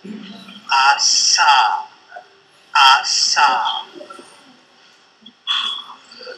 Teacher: it involves, of course, a constriction between the tongue and the alveolar ridge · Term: alveolar place